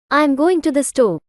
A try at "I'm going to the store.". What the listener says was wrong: Great. Just a bit more emphasis on going.